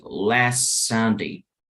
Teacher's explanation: no voy a pronunciar tanto la T